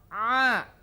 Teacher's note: Ain itu posisi makhrajnya adalah di wastul halqi, di tengah kerongkongan. Ya, pada makhraj am, makhraj secara umum, ain adalah makhrajnya adalah al-halq, artinya kerongkongan, huruf kerongkongan secara umum.